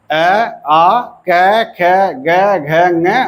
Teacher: कंठ से अ, आ, क, ख, ग, घ, ङ और विसर्ग उच्चरित होते हैं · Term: कंठ ध्वनि